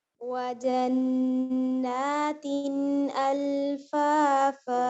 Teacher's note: اچھا دیکھیں یہ جو تنوین ہے نا, آپ اگر اس کو لمبا سا ذرا سا بھی اس پہ زور دیں گی نا, اس کو دبائیں گی تو یہاں پہ ایک خشوم میں آواز چلی جائے گی. ٹھیک ہے آپ نے اس کو خشوم میں جانے نہیں دینا کیونکہ یہاں اظہار ہے